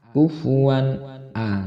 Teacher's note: Di sini terdapat fathatain bertemu dengan hamzah, maka hukum bacaannya adalah izhar halki, tidak boleh mendengung, harus jelas dan terang.